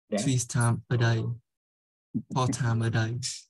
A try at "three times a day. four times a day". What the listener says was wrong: Times. Thiếu chữ S.